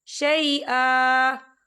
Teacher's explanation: وقف کی صورت میں 1 زبر پڑھا جائے گا، 2 زبر نہیں پڑھے جائیں گے